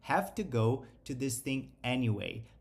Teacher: Lembrando que o quando a gente tá falando numa situação normal a gente não pronuncia com o som de tu tá a gente só faz uma explosão